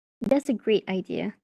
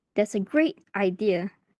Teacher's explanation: With an exaggerated raising intonation, it sounds sarcastic. So it sounds like the speaker actually thinks it's a terrible idea.